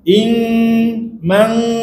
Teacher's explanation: Dia macam menutup jalan keluar suara tu. Jadi suara jadi bunyi dengung tu dia naik banyak ke hidung.